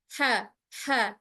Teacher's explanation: dia mudah sebab memang dia datangnya dari tengah tenggorokan. Apabila kita tekan, maka khawatirnya dia akan jatuh pada huruf k ya, ujung tenggorokan. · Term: huruf H